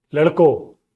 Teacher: hey boys would be ladko without nasalization. The same way, kids, bacho.